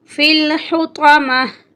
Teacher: جب ہم اس لفظ پہ سٹاپ کریں گے تو پھر جو تا ہے، آخری حرف جو ہے تا، یہ ہا کی شکل میں تبدیل ہو جائے گا